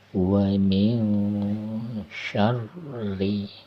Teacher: Kemudian ayat yang keempat masih sama nih, wa min ikhfa ya, nun mati bertemu sya, wa min syarri. Nah, sya tebel ya, terasa udara itu menyebar di rongga mulut kita. Itu cara menyebutkan harokat cara menyebutkan makhraj huruf sya ya.